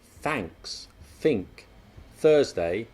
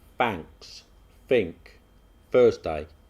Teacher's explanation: the unvoiced th sound that's when you put your tongue between your teeth and blow in such words as thanks think thursday that's replaced by an f